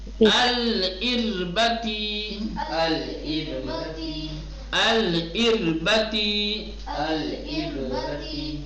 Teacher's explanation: را کو ترقیق ترقیق کے ساتھ پڑھیں گے، را ساکن ما قبل کسرہ